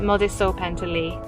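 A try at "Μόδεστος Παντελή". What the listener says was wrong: It's actually Modestos Bandeli. Mum forgot the S.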